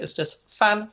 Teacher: And then fan is 轻声, okay? It's the light tone, okay?